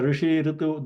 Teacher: that r is modulated at murdha, because you can see that, you can feel that your tongue is bending backwards, touching the roof of the mouth.